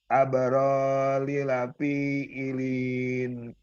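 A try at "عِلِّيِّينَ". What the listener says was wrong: Ya, ditahan-tahan, diseret-seret. Kurang dikagetin pas li. Kayak dihentak-hentak gitu.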